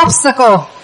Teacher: Nhưng mà nhìn cái dấu phiên âm, và dường như là chữ này ha, thì nhấn chữ nhấn đầu tiên. Thì mình sẽ đọc chữ đầu cao lên và chữ sau thấp xuống.